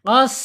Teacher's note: secara sifat sin ini ada di alhams mengalir suaranya eh mengalir napasnya ketika sin ini sukun contoh qos kalau di kita sukunkan ini sin qos gitu itu mengalir ya.